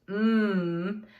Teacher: what we call bilabial which means two lips